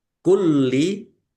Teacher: lamnya ada tasdidnya dibaca dobel ditekan dan ditahan biar tampak dobelnya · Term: double